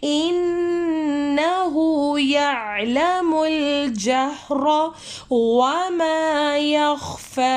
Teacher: انہو میں ان میں غنہ ہو رہا ہے اور ہو کو ہم لانگ کریں گے، جدھر بھی الٹا پیش آ جائے وہاں پہ ہم نے تھوڑا سا لمبا کر کے پڑھنا ہے.